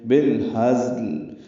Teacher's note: انہو لقول فصل وما هو بالہزل، وما میں ما الف مدہ، ہوا جلدی پڑھنا ہے، بالہزل لام ساکن پہ اظہار ہے، ہا اقصی حلق سے ادا کریں گے، زا سے ملائیں گے، تیز صفیر سے زا ادا کریں گے · ہا اقصی حلق سے ادا کریں گے، زا سے ملائیں گے، تیز صفیر سے زا ادا کریں گے، اور لام ساکن وقفاً.